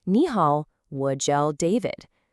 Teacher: You hear that rising tone on ni?